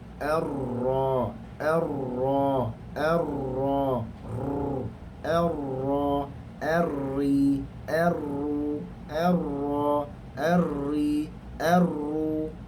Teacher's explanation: Hujung lidah dan belakangnya, maknanya kawasan itu menekan dalam keadaan yang luas sedikit. Keluar padanya adalah huruf ra. Menekan gusi gigi kecil atas.